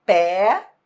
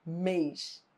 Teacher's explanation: No que diz respeito ao timbre, é que eles são diferentes. Pé tem timbre aberto. Mês tem timbre fechado. E é por isso que pé parece ser mais tônico do que mês, mas não é não.